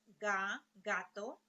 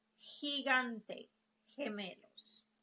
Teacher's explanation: it can be a soft sound like G in the case of ga, gato, or it can be a hard sound like H, like gigante, gemelos